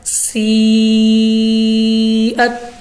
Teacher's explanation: مدہ کے بعد حمزہ اسی کلمے میں ہے تو ہم نے اس کو کھینچ کر پڑھا ہے کیونکہ ہمارے پاس مد متصل ہے